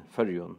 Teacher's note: the dative ending 'm' in Føroyum is pronounced n.